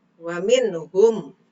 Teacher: Ada nun mati menghadapi ha, ya dibaca jelas, itu hukumnya idhar.